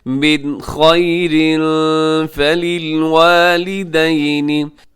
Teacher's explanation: من خیر فللوالدین، من خیر، یہاں نون ساکن ہے، نون ساکن کے بعد خا ہے، یہاں اظہار کیجیے گا اور غنہ نہ کیجیے گا